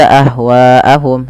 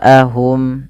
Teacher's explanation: Maka harus panjang wya empat harakat atau lima. Tidak boleh dua, tidak boleh dibaca ahwaahum, tapi harus baca empat. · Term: mad wajib muttasil